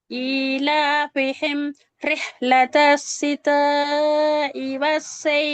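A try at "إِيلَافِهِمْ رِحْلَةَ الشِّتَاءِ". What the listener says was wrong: போதாது. தாவ நீட்டுறது போதாது. அலிஃப் ட சவுண்ட் ஹம்சாட சவுண்ட் ஐனுக்கு போகுது. ஐ என்று தொண்டையால வருது அது போல. பிரச்சனைன்னு சொன்னா இந்த ஈய பிரச்சனை இங்க இருக்குது.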